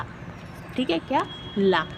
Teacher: जब हमारे जब हम किसी वर्ड का उच्चारण करते हैं और जो हमारी जो जिभ्या है वो अग्र भागव वर्ष को स्पर्श करती है और जो स्वास है यानी कि जो वायु है वो जिभ्या के दोनों तरों के पार्श्वों से निकलती है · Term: पार्श्विक व्यंजन